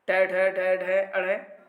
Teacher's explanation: ट, ढ, ढ, ढ, अड़, ये पहले विकल्प में मूर्धन्य व्यंजन है। जीभ का अग्रभाग बोलते समय पीछे को मुड़ जाता है, इसलिए मूर्धन्य व्यंजन है।